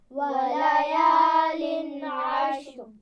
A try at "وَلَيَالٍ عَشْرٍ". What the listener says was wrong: وَلَيَالٍ غنہ نہیں ہوگا اور قلقلہ بھی نہیں کرنا. وَلَيَالٍ عَشْرٍ.